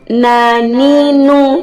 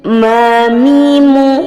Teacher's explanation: Nun dikeluarkan melalui ujung lidah mengenai gusi gigi seri atas dan mim dikeluarkan melalui kedua bibir kita atas dan bawah